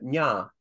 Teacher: you get a palatal nasal, like a nya type sound